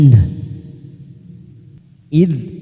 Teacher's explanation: huruf dal sukun kita tahan, jangan sampai memantul karena bukan qalqalah, kita tahan.